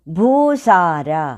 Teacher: భూ అన్నప్పుడు దీర్ఘం ఉంది కనుక గురువు స లో కూడా దీర్ఘం ఉంది కనుక గురువు ర అనేది లఘువు రెండు